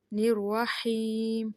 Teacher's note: میم جو ہے وہ ناک میں نہ پڑا جائے